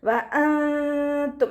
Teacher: മഖ്റജിലേക്ക് നമ്മൾ നാവിനെ കൊണ്ടുപോകണം, അവിടെ തട്ടിക്കാതെ നൂനിനെ മറച്ചു വെക്കുക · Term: ഇഖ്ഫാ